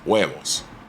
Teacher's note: It's a soft, very short and abrupt H sound.